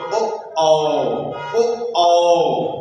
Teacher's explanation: कंठ से भी ध्वनि उत्पन्न हो रही है और ओठ आपस में टकरा रहे हैं, इसलिए इनका उच्चारण स्थान क्या होता है, कंठोष्ठ।